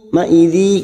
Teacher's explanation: Ma'idhi kasrotain bertemu ya idgham bi gunnah masuk ke huruf ya dan ditahan selama 3 harokat